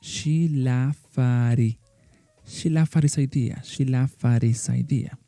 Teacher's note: In this case, the his is not really a vowel sound, but we are going to drop the sound of the H